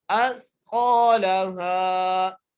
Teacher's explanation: سین کی آواز نہ فیلو، سا ہی ادا ہو، اس قالہا، قاف کو ایک الف مقدار کھینچ کے پڑھنا ہے، موٹا کر کے پڑھنا ہے